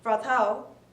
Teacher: the R sound, which is not so clearly pronounced in British English, will be pronounced more strongly than American English